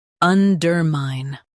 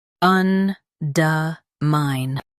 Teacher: In US, stress der. In UK, stress duh.